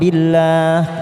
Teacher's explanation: Billah kita baca tarik tipis lam Jalal empat harakat kita panjangkan